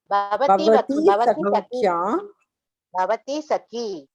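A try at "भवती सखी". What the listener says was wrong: Bhavati sakhi. You stress on the long vowel. Okay. If you say bhavati sakhi, no, it is bhavati sakhi. Mention or emphasize on that long vowel sound.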